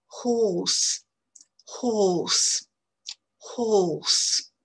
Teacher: la voyelle elle est très à l'arrière de la bouche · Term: voyelle longue